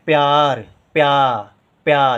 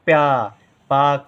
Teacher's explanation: प्या या देर तक बोला जा रहा है या में बड़े आ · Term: बड़े आ की मात्रा